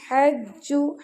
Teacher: ہا گلے کے درمیان سے · जी पर शदा है तो जी पर सख्ती होगी